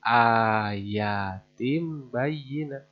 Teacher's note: tanwin JR menghadapi huruf ba sama dibaca diganti dengan suara mim